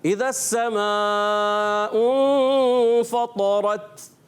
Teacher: شدت کی وجہ سے سختی کے ساتھ آواز بند ہوتی ہے اور سانس جاری رہ جاتا ہے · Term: شدیدہ محموسہ